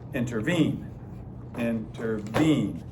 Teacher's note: Unstressed, unstressed, stressed is an anapest.